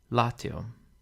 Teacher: the penult is short, so the accent falls on the antepenult